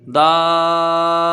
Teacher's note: ٹھیک ہے، تو یہاں حرف مد کے بعد سکون لازم آیا، یہاں مد لازم ہوگا جس کی مقدار 3 الف یا 5 الف ہے۔ با میں زبر ہے، جلدی پڑھیں گے، تا کے نیچے 2 زیر کی تنوین ہے، دابتن۔